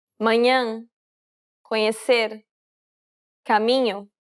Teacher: It sounds a bit like you're trying to say an N and a Y sound at the same time.